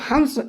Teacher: नाक से अधिक और मुंह से कम हवा निकाल गई